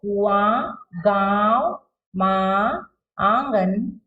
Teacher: अनुनासिक के शब्द जैसे इसमें क्या होता है? नाक और गले दोनों से निकलती है हवा।